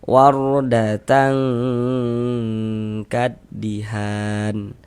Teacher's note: Kita samarkan bunyi tanwinnya, kemudian kita dengungkan. Sehingga di bagian tang tuh kita tahan sejenak, kita panjangkan. Kira-kira panjang 2 harokat kita gunakan. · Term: ikhfa